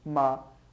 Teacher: a tônica é a antepenúltima então ótima é uma proparoxítona